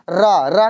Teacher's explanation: र बोलते हैं तो हमारी जीवा कई बार लुढ़कती है। इसलिए इसको हम लुंठित व्यंजन कहते हैं।